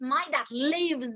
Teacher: Bởi vì âm v là âm có âm thanh, cho nên là chúng ta sẽ đọc là lives.